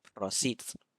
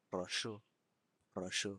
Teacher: So you can see s changes to sh, s changes to sh, and s in prosit changes to sh in proshu